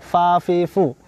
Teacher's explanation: rakhwah, suara tidak tertahan.